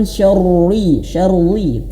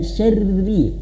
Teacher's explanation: maka dia dibaca tipis ya rnya dibaca tipis kenapa karena dia berharakat kasrah